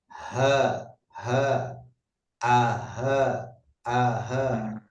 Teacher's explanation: cukup rasakan ada udara yang mengalir lewat tenggorokan bagian paling bawah. Tidak usah terlalu besar sehingga terucap itu tidak.